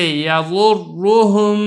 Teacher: چوتھی صورت دیکھیں را مشدد ہو اور اس کے اوپر پیش ہو، جیسے یضرہم، را کے اوپر تشدید ہے، اس کے اوپر پیش ہے تو اس کو پر کر کے پڑھنا ہے